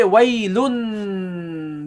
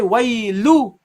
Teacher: So the noon with the non-vowel noon that we normally pronounce with the tanween, we drop. Okay, so normally you would say waylun, the noon at the end, but now you drop this, so you say waylu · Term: drop the tanween